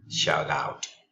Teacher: the T doesn't sound like T sounds like a soft D shout out this is because when we have eighty between vowels · So the word here is shout and out, but the T doesn't sound like T, sounds like a soft D